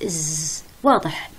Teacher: الإز هو أقوى صوت فيه اهتزاز، إز واضح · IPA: / z /